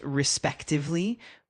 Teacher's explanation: with the emphasis on the second syllable